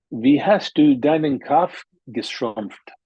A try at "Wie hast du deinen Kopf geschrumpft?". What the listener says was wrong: Yeah, be careful again with the A. English speakers have challenge pronouncing the German A, which is honestly the standard A, similar to French and many other languages, hast.